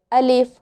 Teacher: अलिफ, ये मुंह के खाली हिस्से से अदा होता है